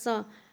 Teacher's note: तो हम स बोल के देखेंगे तो हमारा तालु सटेगा।